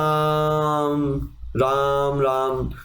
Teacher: आवाज गूंज रही है, आवाज लंबी जा रही है, तो आपका वो प्लूत स्वर होगा